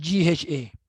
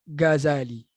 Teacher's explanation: Ghazali kita panggil, kita guna pangkal lidah Ghazali. Sebenarnya huruf ghain bukan ga, dia ra. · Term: ghain palsu